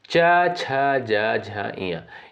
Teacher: च वर्ग के अंतर्गत जो भी वर्ण आपके आते हैं, इन सभी का उच्चारण किस से होता है? तालु से यानी तालव्य से होता है।